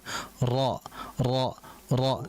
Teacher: Karena adanya getaran yang mengulang, yang berulang yaitu dua getaran yang harus kita jaga disebabkan karena tersentuhnya ujung lidah dengan langit-langit atas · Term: sifat takrir